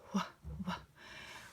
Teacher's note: When you say the WH correctly, you actually get a puff of air coming out of your mouth. These ones are two letters that go together.